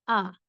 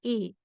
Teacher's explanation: تو زبر کی 2 آوازیں ہیں، ایک معروف صحیح آواز آ، اور ایک مجہول غلط آواز اے